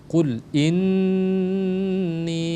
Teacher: Jadi nun bertasydid jadi digunnahkan, ditekan selama 2 harokat, wajibal gunnah.